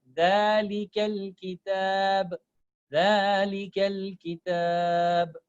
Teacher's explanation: So I'm making kaf with the lam, connecting kaf with the lam. So it will become one letter for me.